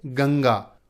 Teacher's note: अनुस्वार इसे हम नासिका, नाक से बोलते हैं। किसी भी स्वर के ऊपर ये जो बिंदु लगी होती है इसे अनुस्वार कहते हैं।